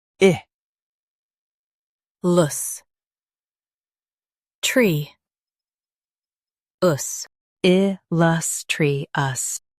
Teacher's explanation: Stress lus and keep tri light.